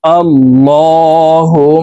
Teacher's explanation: বলতে হবে কারণ আল্লাহ শব্দের আগের হরফে জবর অথবা পেশ হইলে এই লামকে ল বলে পড়তে হবে অর্থাৎ মোটা করে পড়তে হবে